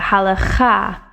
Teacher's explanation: the actual emphasis is on the last syllable in the hebrew